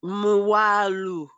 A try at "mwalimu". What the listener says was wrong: So I know you're meeting that challenge a bit, where you tend to make you sound like A as in English. So you say mwalima. So it should be mwalimu. It should be mwalimu, not mwalimu.